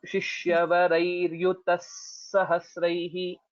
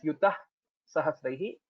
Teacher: So what you can think of is there is no Visarga and there is one more Sakara.